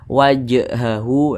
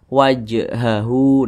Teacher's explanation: Maka namanya itu qalqalah sugro. Nah, qalqalah sugro, qalqalah kecil. Jadi pantulannya itu kecil saja.